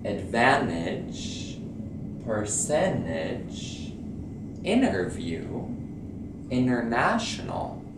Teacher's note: when you have an N and a T together, you will stop the T from being pronounced.